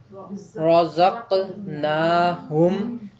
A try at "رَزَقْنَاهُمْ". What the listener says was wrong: نہیں ہے، یہ رزقناہم، رزقناہم، نا جو ہے پوری آواز محسوس ہونی چاہیے ادائیگی کے وقت۔ ٹھیک ہے آگے۔